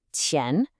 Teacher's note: The tone is the second tone, the rising one. It should sound like you're asking a question.